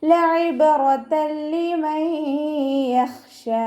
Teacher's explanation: തെൻവീനിന് ശേഷം ഇദാം ബിലാഗുനയുടെ അക്ഷരമായിട്ടുള്ള ലാമ് വന്നു. തെൻവീനിനെ ലാമിലേക്ക് ലയിപ്പിച്ച് ഉന്ന കൊടുക്കാതെ ഓതി കൊടുക്കുക